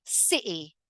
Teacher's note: I actually have a little pause between the I and the final sound, city, city.